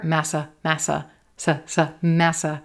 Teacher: Really quick first two syllables. Definitely has schwa there.